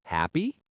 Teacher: in a question like are you happy? The voice goes up at the end. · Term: intonation